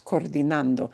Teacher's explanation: this is one of where we do draw out the O because it's two O's